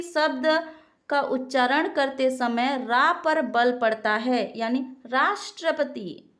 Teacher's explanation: राष्ट्रपति शब्द का उच्चारण करते समय रा पर बल पड़ता है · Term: बलाघात